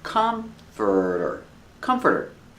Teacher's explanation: The stress is on the first syllable. It's 3 syllables.